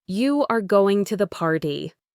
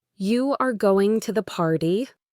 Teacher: his voice needed to go up at the end, indicating a question. This small difference in how the voice sounds completely changes the meaning from a simple fact to a real question or even surprise.